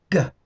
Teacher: it starts with a stop of air and then we allow that air to explode slightly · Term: stop plosive